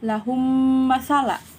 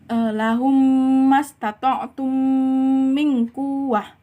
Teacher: Idgham mislen hurufnya yaitu mim. Memasukkan bunyi mim ke dalam mim yang berbaris beserta dengungan.